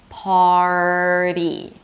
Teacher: So hold out the R, make sure that you're actually pronouncing the R, and then move on to the flap T.